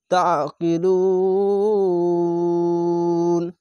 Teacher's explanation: পড়বেন কেন পেশের পরে অসা সাকিন এক আলিফ টেনে পড়তে হয় তার শেষ অক্ষরে যদি সাকিন দেন তাহলে এক দুই তিন তিনটি অক্ষর তিন আলিফ টানে পড়বেন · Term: মাদ্দে আরজি